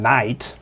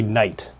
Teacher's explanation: Instead of saying aɪ, we say ʌɪ. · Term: Canadian raising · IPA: nʌɪt